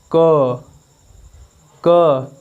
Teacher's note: क स्वर तंत्र में कंपन नहीं हो रहा है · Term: अघोष